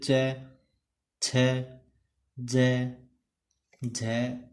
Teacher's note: प्रारंभिक चरण स्पर्श का होता है तथा अंतिम चरण संघर्ष का होता है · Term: स्पर्श संघर्षी